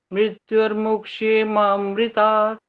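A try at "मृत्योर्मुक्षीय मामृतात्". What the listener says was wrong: ये जो लास्ट में बोलते हैं ना मृत्यु और के बाद, वो और स्पष्ट बोलना चाहिए। मृत्यु और मुक्षी, मुंह वाली आवाज आनी चाहिए। आपकी ना मुक्षी आए ना मोक्षी आए, दोनों का मिक्स आ गया बीच में, ऐसा नहीं करना होता, ताकि आप अपनी तरफ से पहले स्पष्ट हो जाओ कि है क्या, और सुनने वाले को फौरन पता लगना चाहिए।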